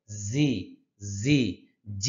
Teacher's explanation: জিহ্বার আগাটা সামনের নিচের দুই দাঁতের পেটে লাগবে, গিয়ে পেটে গিয়ে লাগবে, শক্ত করে লাগবে।